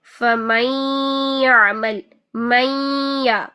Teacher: तो देखते हैं, इनकी मिसालें देख लेते हैं कि अगर नून साकिन के बाद या आ जाए, फमैयामल, मैया, यहाँ पर 2 सेकंड का आपने गुन्ना करना है, लाजमी तौर पर 2 सेकंड का गुन्ना करना है। नून की आवाज़ को या के अंदर मर्ज करना है और ये 50-50% दोनों की आवाज़ आनी चाहिए, नून की भी और या की भी। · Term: इदगाम माल गुन्ना